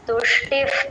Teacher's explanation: ఆ విసర్గ F sound లాగా చెప్పాలి